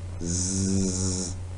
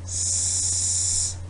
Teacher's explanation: Z, there is vibration. This is called voicing. But when I say S, there is no vibration. That means it is voiceless sound.